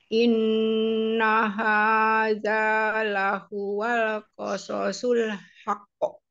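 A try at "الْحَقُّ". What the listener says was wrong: Ditahan di kata haqqo. Itu qalqalah akbar. Haqqo. Haqqo.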